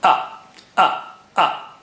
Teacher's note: Hamza Ayan has ah sound ah middle of the throat whereas Hamza is from the bottom or the edge of the throat